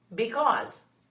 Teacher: Kind of the Z sound actually, right? The voiced S.